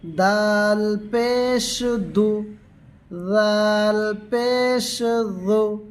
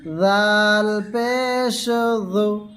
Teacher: জিহ্বার আগা সামনের দাঁতের আগা হইতে আদায় করিবে।